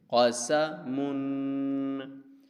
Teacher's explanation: سین زبر سا، قسا، میم دو پشمن، قسامن، ٹھیک ہے، قسامن، قاف کو بھی نہیں کھینچیں گے، سین کو بھی نہیں کھینچیں گے، میم پر ہم غنہ کریں گے